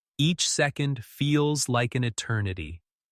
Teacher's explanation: Each second feels like an eternity. Emphasis slow on eternity, stretching the word to convey wait